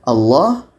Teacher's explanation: huruf la dipanjangkan sebanyak dua harakat · Ini pengkhususannya untuk kalimah Allah. Jadi kalau kita temukan lafaz Allah, la-nya panjang 2 harkat.